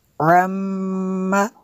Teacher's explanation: میم شدد ہے، یہاں پہ غنہ ہوگا